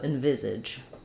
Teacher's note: reduced and then my viz syllable is going to be stressed letter s says the z sound it's voiced in envisage